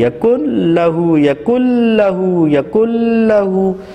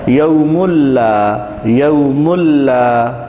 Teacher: نون کی آواز مکمل طور پر ختم ہو گئی ہے اور ناک سے غنّے کی آواز نہیں آ رہی ہے، یہ ہے ادغام بلا غنّہ، یعنی بغیر غنّہ، بدون غنّہ۔